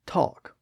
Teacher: talk has an a vowel sound like in the word caught so there's not really an L in there we don't say to we say talk with the a vowel